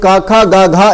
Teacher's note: तो क, ख, ग, घ, इन चारों को आप बोलिए, आपकी जीभ एक जैसा रिएक्ट करेगी। हर बार जीभ जो है, आपकी जिह्वा जो है वो कंठ को बंद करने का काम करेगी, कंठ को बंद करने की कोशिश करेगी, ठीक है।